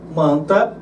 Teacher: esse AN como se fosse um A nasalizado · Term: dígrafo vocálico